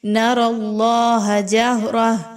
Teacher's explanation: را کے ساتھ اللہ کا حرف موجود ہے، اس لیے آپ اس را کو پر پڑھیں گے کیونکہ را پر زبر ہے، اور اللہ کے حرف سے پہلے را پر زبر ہے، اس لیے اس اللہ کے حرف کو بھی پر پڑھا جائے گا۔